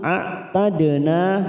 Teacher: dal sukun qalqalah sugro, kita pantulkan